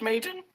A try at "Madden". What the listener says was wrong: Madden. It would be pronounced Maiden if it only had one D.